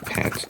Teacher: P represents the voiceless bilabial stop, as in English pat.